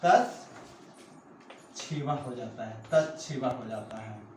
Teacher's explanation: त को क्या हो जाएगा, च हो जाएगा, और श का क्या हो जाएगा, छ हो जाएगा। यानी त को हम च कर देंगे और स को क्या, त को, तो इस प्रकार होता है।